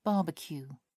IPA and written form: ˈbɑːbɪˌkjuː (barbecue)